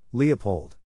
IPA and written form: ˈli əˌpoʊld (LEOPOLD)